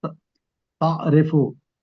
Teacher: इसमें एन को गले से निकालना है जी और रे को बारीक पढ़ना है, नीचे जेर है सर।